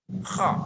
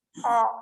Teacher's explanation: Kalau ha tadi tenggorokan bagian tengah, kalau ko itu ujung tenggorokan yang dekat dengan lidah, sehingga suaranya bergetar. Suara yang muncul, yang timbul dari ujung tenggorokan kemudian nabrak lidah sehingga suaranya bergetar. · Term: huruf kha